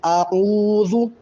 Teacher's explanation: عین کے عین واو مدہ ہے، تو عین کو تھوڑا کھینچیں گے، لمبا کریں گے